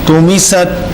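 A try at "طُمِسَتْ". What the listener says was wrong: تو موٹا کیجیے.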